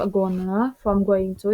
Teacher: This is an example of assimilation because the velar nasal changes to the alveolar nasal n due to fast speech